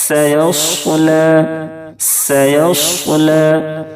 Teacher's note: दोनों हर्फ का मखरज तो एक ही है लेकिन दोनों हर्फ में बहुत फर्क है। सीन के अदायगी में पतली सीटी जैसी आवाज निकलती है